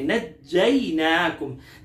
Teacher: जीन पर तो सख्ती करेंगे लेकिन इसके बाद या है जो कि हुरूफ लीन में से है, लीन को नरमी से पढ़ा जाता है